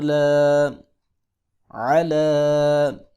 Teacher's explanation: علا لام کے اوپر کھڑی زبر ہے، اس کو ایک الف کے برابر لمبا کریں گے